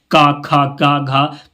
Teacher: ये कंठ है आप बोल के देखें आपको पता हो जाएगा क ख ग घ तो ये जो है कंठ से उच्चारित होते हैं तो क वर्ग का उच्चारण स्थान क्या होगा कंट होगा आपको